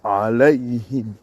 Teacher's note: le ha qui ne coupe pas l'air. Le H aspiré, mais qui ne coupe pas l'air. Ce ha, quand tu le prononces, ta poitrine vibre à l'intérieur. · D'abord, c'est le A grave dont ça sort de la gorge.